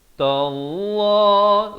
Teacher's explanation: lafaz jalalah dibaca tebal 2 harakat.